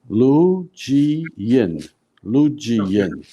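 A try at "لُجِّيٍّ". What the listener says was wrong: You have to join them. Shadda means you join the previous letter to the current letter. So you're saying Lu ji. You haven't joined the lam and the jim.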